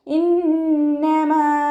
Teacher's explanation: മീമിൻ്റെ കൂടെയുള്ള അലിഫ് മദ്ദിന് 2 കൗണ്ട് മാത്രം നീട്ടുക കേട്ടോ.